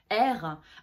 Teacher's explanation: le r c'est quelque chose qui nous en tant que français on le dit au fond de gorge r alors que les italiens il le place devant là derrière